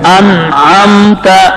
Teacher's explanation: اس نون میں غنہ نہیں ہے، کیونکہ نون ساکن کے بعد حرف حلقی عین آ جائے تو غنہ نہیں ہوتا. اس میں اظہار حلقی ہے.